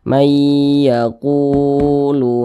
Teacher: panjangnya dua harakat atau kira-kira dua ketukan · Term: Mad Thobi'i